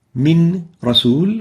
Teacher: when we merge them together we don't pronounce the noon